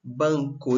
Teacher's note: A sílaba forte aqui é ban, não é isso, tá?